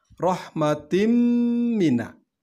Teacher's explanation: Nah, di sini ada huruf mim, maka hukumnya adalah idgham. Dan dibaca mendengung, maka disebut hukum idgham bi ghunnah